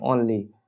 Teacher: हल्का सा आ और हल्का सा ओ दोनों को मिलाकर ओनली पढ़ा जाएगा जहां ये लगा हो दोनों पढ़ते हैं आ और ओ दोनों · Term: अर्ध चंद्र ध्वनियां